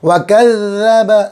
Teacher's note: ज़ाल बारीक, ज़बान की नोक और ऊपर के दांतों का किनारा